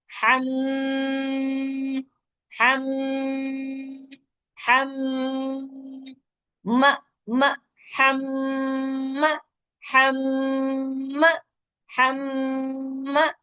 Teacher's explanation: سیکھا کہ نون پہ شد آئے میم پہ شد آئے تو ہم وہاں رک کر آواز ناک سے نکالتے ہیں اور وہاں ناک سے نکالنے کی آواز ہم دو حرکات تک کرتے ہیں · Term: ناک سے آواز